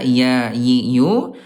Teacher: Huruf ya dari segi udara jahr tidak ada udara ya.